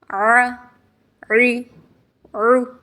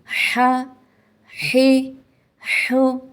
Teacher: عین اور حا کی ادائیگی میں زبان کی جڑ کو حلق کی طرف مضبوطی سے دباتے ہوئے باریک اور رگڑ کھاتی آواز میں پڑھیں گے۔